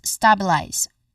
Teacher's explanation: The first syllable is our stressed syllable